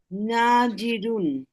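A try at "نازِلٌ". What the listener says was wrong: নাজিলুন, কিন্তু এটা র না তো, লাম। নাজিলুন, তাহলে কি হবে? না না না, লু না হবে না। আপনি ওই ইসেম এর কথা ভাবেন। মুসলিমুন, মুসলিমানি, মুসলিমুনা, মুসলিমাতুন, মুসলিমাতানি, মুসলিমাতুন। তাহলে কি হবে? নাজিলুন। নাজিলুন, নাজিলানি, নাজিলুনা।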